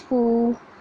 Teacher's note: واو جس پر جزم ہو اور اس کے پہلے والے حرف پر پیش ہو اسے تھوڑا کھینچ کر پڑھیں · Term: واو مدہ